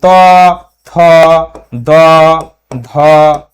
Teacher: এই বর্ণগুলির উচ্চারণ স্থান দন্ত দাত স্পর্শ করে জীবকে দাঁত স্পর্শ করে এই বর্ণগুলি উচ্চারণ করতে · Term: দন্ত বর্ণ